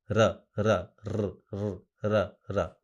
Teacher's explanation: उच्चारण साफ होना चाहिए आपकी सुविधा के अनुसार, लेकिन वो र, आपकी जो जीभ है वो टच नहीं होती है, वहां से हवा पास होती है और वाइब्रेट करती है